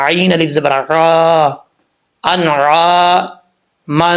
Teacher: عین کو کلیئر کر کے پڑھنا ہے، حمزہ نہیں پڑھنا